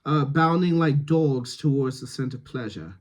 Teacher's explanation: more rounding on dogs